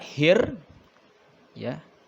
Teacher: kita membaca hir ya, itu seolah-olah alif lam yang ada di tengahnya itu tidak kebaca. Makanya di sini disebutnya alif lam samsiah.